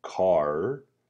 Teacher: the word car i can see that the tracking ball travels from ah to er